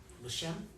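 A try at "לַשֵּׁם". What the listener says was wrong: The shame. And as we get going, won't be so hardcore on the A sound on the tseri.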